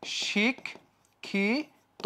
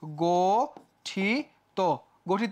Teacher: যে কোন শব্দের শেষে যদি ইত প্রত্যয় যুক্ত থাকে তাহলে তার শেষে অকারটা ওকার হয়ে যায়